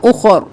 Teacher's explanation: ہم وقف کی صورت میں بھی رو کو موٹا پڑھیں گے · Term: رو موٹا